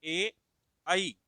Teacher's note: इनका उच्चारण स्थान कंठ तालव्य यानी कि कंठ और तालु से किया जाता है।